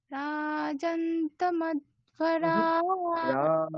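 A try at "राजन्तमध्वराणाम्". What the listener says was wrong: রাজন, উপরে স্বর হবে, রাজন।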